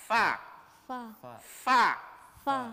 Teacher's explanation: gigi atas ketemu dengan bibir bawah